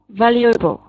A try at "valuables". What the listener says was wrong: Just remember the S on the end here, valuables.